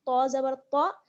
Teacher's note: تو کا مخرج زبان کی نوک اور ثنایا علیہ کی جڑ